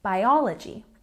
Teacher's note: we have a stress on the second syllable in biology